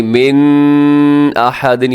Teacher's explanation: مِنْ أَحَدٍ نون ساکن کے بعد حمزہ ہے تو یہاں اظہار کیجیے گا، غنہ نہیں کرنا